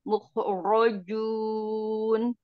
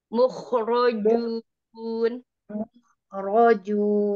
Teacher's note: Bukan muj, kho itu mukhrajun. mukhrajun, kho-nya, agak ngorok.